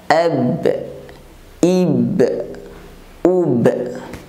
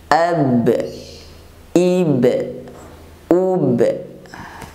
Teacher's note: Kemudian yang keenam yaitu huruf ba. Ba apabila diucapkan dalam keadaan sukun maka suaranya tertahan. Contoh ab, ib, ub yang ada suara pantulan.